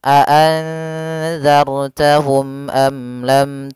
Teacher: ketiganya harus jelas suara mimnya dan tidak boleh ditahan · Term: Izhar Syafawi